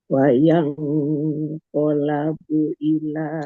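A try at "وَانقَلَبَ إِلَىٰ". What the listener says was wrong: Koli. Bukan kola, tapi koli.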